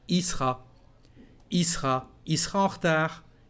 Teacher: You can drop the letter L of the subject il and just say I, and again the letter E.